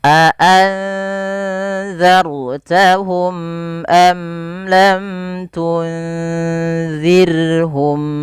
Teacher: Nah, nunnya di sini tidak dikasih harokat karena biasanya nunnya mati ketemu zal, maka nunnya samarkan ke zal ya. Terdengar seperti bunyi eng gitu ya. Tapi dia tidak pakai eng. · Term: ikhfa